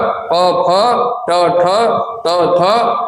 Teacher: ये जो वर्गों के पहले और दूसरे वर्ण होते हैं इनमें कंपन कम होती है